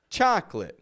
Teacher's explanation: chocolate where we take out the O